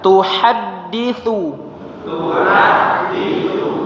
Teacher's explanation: kemudian tuha ha-nya tipis jangan jadi tebal